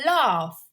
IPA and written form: lɑːf (laugh)